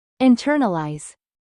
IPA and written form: ɪnˈtɜrnəlaɪz (INTERNALIZE)